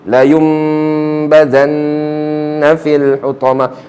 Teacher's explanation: Badal. Kita gantikan bunyi nun mati ni kepada mim. La yum, macam kita baca mim.